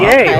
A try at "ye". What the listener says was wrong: No, it was pronounced the, like T-H-E. There was a letter that looks like a combination of a lowercase b and a lowercase p. And those two letters made the TH, or that symbol made the TH sound.